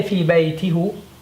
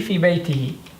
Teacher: Expanding upon the dhamma, changing to a kasra for vocalic harmony because the kasra came before it.